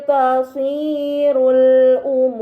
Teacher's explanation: pada kata tasirul umur terdapat mad bertemu dengan huruf yang disukunkan karena waqaf, ini dinamakan mad arid, maka harus dibaca panjang selama 6 harokat